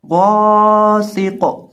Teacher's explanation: غین کو اور قاف کو، ان دونوں کو موٹا کر کے پڑھیں گے